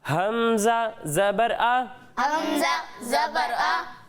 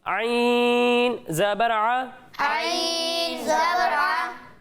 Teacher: جب ہم حمزہ کی ادائیگی کریں گے تو اسے حلق کے نچلے حصے سے پڑھنا ہے، اور جب ہم عین کی ادائیگی کریں گے تو اسے حلق کے درمیانے حصے سے پڑھنا ہے